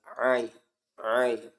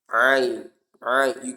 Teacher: these ain articulates from the middle part of the throat, and that's why you feel the vibration when you pronounce it correctly